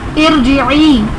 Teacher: جیسے قرآن پاک میں ارجعی یہ کلمہ ہے ایک، اس کے اوپر کوئی حرکت نہیں ہے، تو اس کے نیچے جو ہم نے زیر، حمزہ کے نیچے جو زیر لگائی یہ عارضی حرکت ہے، یہ عارضی زیر ہے. تو را ساکن سے پہلے عارضی زیر ہو تو اس صورت میں را کو پر پڑھا جاتا ہے، یعنی موٹا پڑھا جاتا ہے